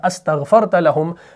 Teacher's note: لیکن حمزہ وصلی مکسور ڈراپ ہو گیا